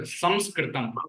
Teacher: the Anuswara which is there, it is pronounced as Makara. Nasal sound is there.